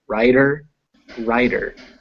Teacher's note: But when you add that ending, we get writer and writer. They are pronounced the same. You hear how both of them have become D's.